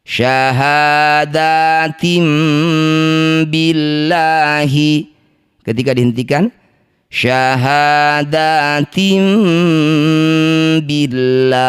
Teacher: Cara bacanya la panjangkan dulu enam harakat huruf terakhir sukunkan. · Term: mad arid